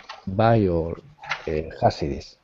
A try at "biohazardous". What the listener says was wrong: You're dropping the S's at the end of the word. So I didn't hear hazardous and crime scenes with the S.